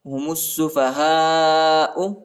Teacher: میم کو سین کے ساتھ ملانا ہے، سین پر شد آیا ہے